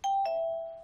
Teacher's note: 接下来我们来到第四声了哈，往下走